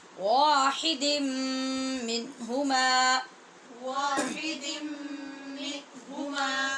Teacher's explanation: واحدن دال کے نیچے 2 زیر کی تنوین ہے، آگے میم ہے، تو ہم نے یہاں غنہ کر کے پڑھنا ہے